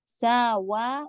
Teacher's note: ساوا واو کے لیے ہونٹ گول، پھر فی کہیں گی حرف لین کر کے پڑھیں گے